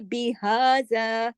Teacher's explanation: फिर देखिए बिहाजा, हा पे खड़ा जबर है, ये हा जो है गले से नहीं होती, इसकी आवाज सीने की तरफ जाती है।